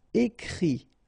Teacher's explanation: phonetically you pronounce i because final t is not pronounced